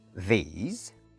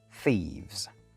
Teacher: First up is the pronunciation of TH, which, to make things complicated, has two different pronunciations in English. One is a voiced consonant, as in these, and the other is an unvoiced consonant, as in thieves.